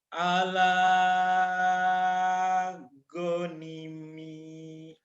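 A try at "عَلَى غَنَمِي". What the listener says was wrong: ala gonami, bukan gonimi,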